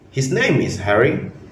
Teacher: If we say, "His name is Harry," with a rising pitch at the end, we are asking a question. But if we say, "His name is Harry," with a falling pitch, it's just a normal statement.